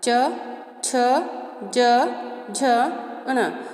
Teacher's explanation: हमारी जिह्वा है वो हमारे तालु को छू रही है, तो यहाँ इनका उच्चारण स्थान हो गया तालु। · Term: च वर्ग